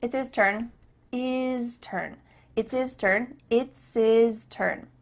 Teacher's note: the H at the beginning of his and her is cut off